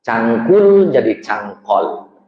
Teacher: Orang Madura nyebut U di akhir nggak bisa. Cangkul jadi cangkol.